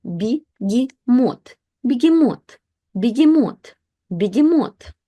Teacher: So when ye is not stressed, it basically switches to the sound E.